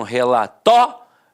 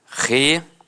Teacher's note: Algumas pessoas dão uma extensão na fala e acabam falando relatório. Então, separa o O do I e fica assim, ó, relatório. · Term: proparoxítona eventual